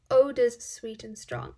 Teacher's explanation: notice the sibilant sound there the repetition of the S sound